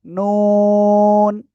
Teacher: জিহ্বার আগায় তার বরাবর উপরে তালুর সাথে লাগিয়ে আপনার চার আলিফটা নিয়ে অক্ষরটা উচ্চারণ হবে